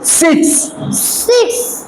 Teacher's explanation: বলবে না মুখ থেকে বাতাস বের হবে বলো সি সিক্স সিক্স ছ টাকে শক্ত করে বাতাস বের করে বলো সিক্স সিক্স